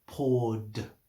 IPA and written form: pɔːd (poured)